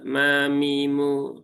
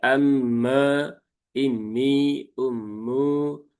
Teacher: mimnya tipis jangan sampai menjadi me karena masih banyak yang membaca mim ini ya seolah-olah ditebalkan